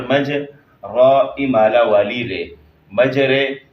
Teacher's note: زبر کو زیر کی طرف، الف کو یا کی طرف مائل کر کے پڑھنا